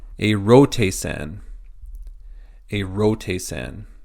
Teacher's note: First letter is eta with a smooth breathing, so there's no change, there's no H added to it